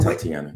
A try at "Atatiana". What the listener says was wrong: There's an A in front of it.